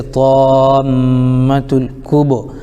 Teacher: حروف قمری میں سے کاف آ رہا ہے، اس لیے لام کو پڑھیں گے، الف کو نہ پڑھیں گے